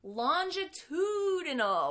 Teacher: In this word, the T does not turn into a D sound.